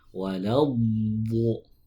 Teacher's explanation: Istitolah itu adalah memanjang dari awal sisi lidah sampai ujung sisi lidah